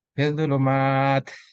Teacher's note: ini idgham juga, idgham syamsiah. Alif lam tidak dibaca, masuk huruf dha.